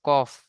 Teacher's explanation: 1 নম্বর, কফের মাখরাজ, কফ, এই যে কফ আছে, কফের মাখরাজ হলকের বা কণ্ঠনালীর শেষ জিভের গোড়া, যেটা কফের মাখরাজ, জিভের গোড়া এবং সেই বরাবর উপরে তালুর সাথে লাগিয়ে উচ্চারিত হয় কফ